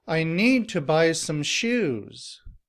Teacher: Here the stress is on need, buy, and shoes.